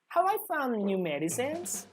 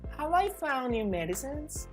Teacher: Here you need to be careful with the intonation of the question. So you say, have I found new medicines? In a rising intonation.